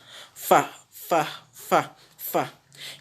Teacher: c'est une lettre qui sort en appuyant l'intérieur de la lèvre inférieure contre la pointe des incisives centrales supérieures. Il s'agit de la lettre Fa.